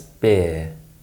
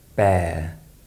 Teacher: keep your mouth more closed when you produce the ear sound to avoid confusing it with the air sound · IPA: /ɪə/